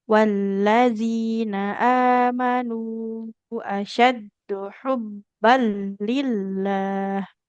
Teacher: Langsung masuk ke huruf lamnya. Namanya idgham bila gunnah ya.